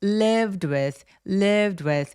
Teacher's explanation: D 소리 앞에 V는 조금 가볍게 소리가 F하고 비슷하게 납니다. 그래서 바람 소리만 가볍게 나면 되는데요.